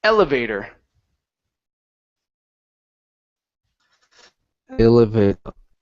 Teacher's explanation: This word here is pronounced elevator. Stress at the very beginning.